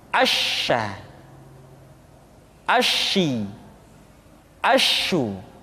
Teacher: Dan sifat yang dimiliki oleh huruf sya yang paling nampak adalah apa yang disebut dengan sifat at-tafashi, yaitu menyebarnya angin di dalam mulut kita.